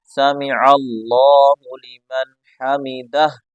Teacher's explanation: اس آخر والی ہا کو بھی ظاہر کریں، اس ہا کو گلے سے نکالیں